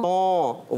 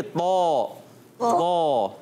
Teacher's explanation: नाक से बचा के पढ़ना है